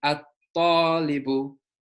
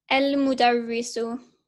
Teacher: So there's almost two tas. There's at and then talibu.